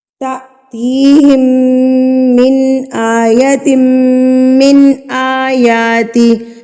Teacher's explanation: تو ہم اس کو پڑھیں گے میم مشدد، یعنی کہ ہم نے یہاں پر گننا کر کے پڑھنا ہے، ناک میں آواز کو لے کر جانا ہے. ایک حرکت کے برابر ہم نے ناک میں میم کی آواز کو روک کے رکھنا ہے، تو اس کو گننا کہتے ہیں